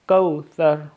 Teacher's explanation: کو لمبا بھی نہیں کریں گے کیونکہ مد لین ہے، اس کو ہم کھینچیں گے نہیں